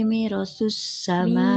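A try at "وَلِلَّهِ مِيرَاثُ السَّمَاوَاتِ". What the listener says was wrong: Mirosu. Mimnya panjang. Mim kasroh ketemu ya. Dua harokat. Mirosus samawati.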